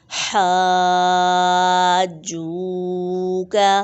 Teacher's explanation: حاجوک، یہاں پر بھی مد لازم ہے، اس لیے اسے کھینچ کر پڑھیں گے، مد کے بعد تشدید آ رہی ہے، جما کے پڑھیں گے، کھینچ کر بھی پڑھیں گے، کیونکہ مد کے معنی ہے لمبا کرنا، دراز کرنا یا کھینچنا۔